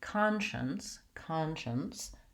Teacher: it's almost like there's no vowel in there at all